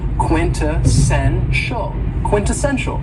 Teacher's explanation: this word has four syllables and the stress is on the third syllable